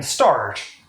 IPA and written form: stɑɹt (start)